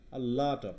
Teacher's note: কি উচ্চারণ হচ্ছে এটা, ও হচ্ছে না আ হচ্ছে, লট অ ল কিন্তু অ হয় না, আ উচ্চারণ হচ্ছে আ লাট লাট হ্যাঁ, আ লট অফ, হ্যাঁ মানে একদম আ না, আবার একদম ও না